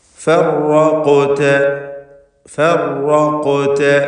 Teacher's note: റാഇന് തഫ്ഖീം കൊടുക്കണം, അത് മുഷദ്ദദത്താണ്, ഷദ്ദുള്ള റാആണ്. തക്രീർ കൂടുതൽ വരാതെ ശ്രദ്ധിക്കണം. ഫർ എന്നിങ്ങനെ വിറച്ചു പോകരുത്.